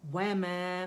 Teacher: wow, complete rolling of the lips